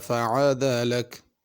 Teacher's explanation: عدل میں عین ہے، اس کو عدل حمزے کے ساتھ نہیں پڑھنا